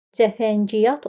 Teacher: Cəfəngiyat oxuyuruq. Kəmiyyət fərqi baş verdi. Y samitinin biri düşdü.